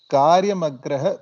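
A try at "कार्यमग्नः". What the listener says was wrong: Karyamagnaha Nakara. No, you don't be sorry because it's difficult to see the difference between Nakara and Rakara there.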